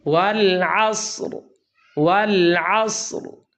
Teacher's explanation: والعصر، والعصر، بعض لوگ یہاں را پڑھتے ہی نہیں ہیں، یا وہ اس طرح ادائیگی کرتے ہیں جس سے را ظاہری نہیں ہوتی، ایسے محسوس ہوتا ہے کہ را پڑھی نہیں گئی، جبکہ را کو پر کریں گے اور اسے ظاہر کریں گے